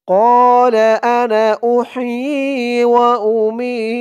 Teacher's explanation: أحيي وأميت এই তো চিহ্ন হতে থামলে এখানে উচ্চারণটা হবে ওয়াউমিত মি জেরের পরে ইয়া সাকিন এক আলিফ টানটা তিন আলিফ টান হয়ে যাবে কারণ অক্ফ করার কারণে মি বলে তিন আলিফ টান দিয়ে এই তাকে ধরবে তার উপরে